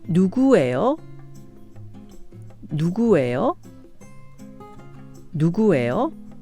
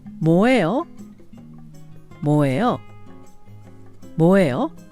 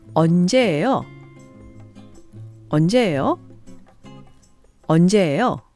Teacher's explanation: followed by the verb be, 예요, which is pronounced 에요 with a rising intonation